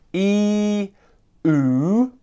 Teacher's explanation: both very similar vowel sounds that are coming from the front and the back of my mouth